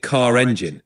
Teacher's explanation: This means that in words like car or hard, where the R comes before a consonant or at the end of a word, it's usually silent, so you get car or hard. However, if the next word begins with a vowel, like car engine, you might hear a linking R come back in, making it car engine.